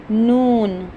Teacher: जुबान का जो हमारा किनारा है उसको हम दांतों की जड़ों से अदा करते हैं।